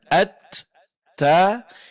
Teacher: huruf ta pangkal lidah tetap pada posisinya dan bunyi suaranya tipis